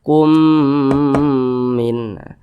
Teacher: Li anfusikum min. Nah, dengungnya itu 2 harokat atau kira-kira 2 ketukan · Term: idgham mimi